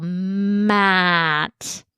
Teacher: In a word like map, we could really overemphasize that m gliding into the vowel